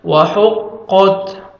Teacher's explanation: لِرَبِّهَا وَحُقَّتْ، ہا کو اپنے مخرج سے ادا کریں گے تاکہ ہا میں ساؤنڈ مکس نہ ہو، قاف کو موٹا کر کے پڑھیں گے اور تا کا لائٹ سے ساؤنڈ آئے گا